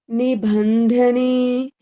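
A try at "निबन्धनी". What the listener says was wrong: There is no Nibandhani. So here there is no H. So see like this. Nibandhani. Ban. It's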